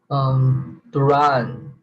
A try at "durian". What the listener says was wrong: Durian. 3 syllables. Durian.